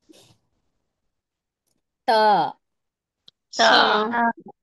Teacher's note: دو دانتوں کی جڑ سے ادا ہوتا ہے